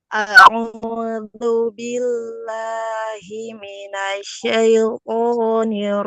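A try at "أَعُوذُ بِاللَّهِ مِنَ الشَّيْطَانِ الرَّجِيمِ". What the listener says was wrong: ya-nya dikit lagi. Ringankan, kurang ringan. A'udzu billahi minasyaitonir rajim. Syaitonir rajim.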